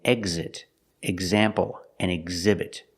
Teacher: sometimes X makes a gz sound with a voice, like in exit, example, and exhibit.